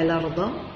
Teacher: عندنا هنا راء مفخمة، وعندنا ضاد حرف من حروف الاستعلاء